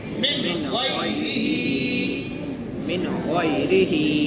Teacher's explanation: یا ساکن سے پہلے زبر ہے، یا لین ہے، نرم آواز کے ساتھ جلدی پڑھیں گے. اور را کے نیچے زیر ہے، آدھی آواز ہے. ہا کے نیچے کھڑی زیر ہے، پوری آواز ہے